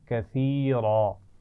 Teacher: کثیرا آخر میں وہی لفظ ہے جو پہلے بھی گزر چکا ہے، لیکن یہاں پر ہم وقف کرتے ہوئے الف مدہ سے بدل کر پڑھ رہے ہیں